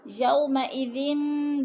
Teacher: وَيَحْمِلُ عَرْشَ رَبِّكَ فَوْقَهُمْ يَوْمَئِذٍ ثَمَانِيَةٌ، فوق کی قاف پر پڑی جائے گی، یو کو لمبا نہیں کریں گے، بولین ہے، یومئذٍ، دو زیر تنوین کے بعد سا حروف اخفا میں سے ہے، تو غنہ کریں گے، ناک میں آواز لے جائیں گے۔